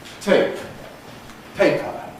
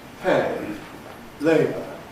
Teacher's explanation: Or again, tape, paper with pre-fortis clipping, pay, labour, without it.